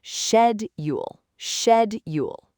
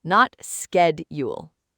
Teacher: That first syllable is so important. It's shed, not sked.